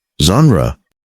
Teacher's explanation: it's a soft, almost whispered ZH sound. Z-H-A-N-ru, like the S in measure or pleasure.